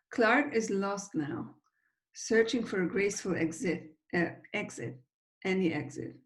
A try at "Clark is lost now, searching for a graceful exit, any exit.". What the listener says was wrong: You didn't connect the K of Clark onto is. You said Clark is lost now, which is totally fine. But I think that we would probably connect them because is not such an important word in the context of a sentence.